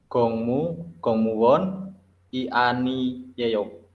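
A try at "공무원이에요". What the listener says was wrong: Salah. Jawab bacanya salah ya. Bacanya salah. Pemenggalan. Coba ulangin lagi, dibaca lagi. Itu ya, gongmuwoni bukan gongmuwoni, tapi gongmuwoni.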